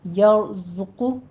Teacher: زے کو سیٹی کی آواز کے ساتھ قوی آواز سے پڑھیں گے اور اوپر ضمہ ہے، ہونٹ گول کیجیے